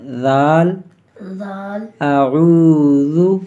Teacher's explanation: یہ زال کو سختی کے ساتھ نہیں پڑھیں گے، نرمی کے ساتھ، ہماری زبان کے نوک اوپر والے دانتوں کے ساتھ